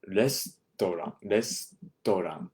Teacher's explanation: The U here is not so pronounced, not pronounced as much. It kind of falls off.